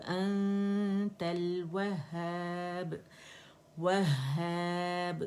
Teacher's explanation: actually मुशद्दद हा है, उसको हमने जमाओ देना है